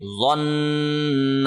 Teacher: اور اخفا اور غنہ میں یہ مین فرق یہ ہے، اخفا کے اندر زبان کہیں پہ ٹچ نہیں ہونی چاہیے، لیکن غنہ کے اندر زبان منہ کی چھت کے ساتھ ٹچ ہوتی ہے، ٹھیک ہے۔ نون والا جو غنہ ہے اس میں زبان ٹچ ہوتی ہے